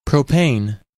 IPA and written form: ˈproʊpeɪn (Propane)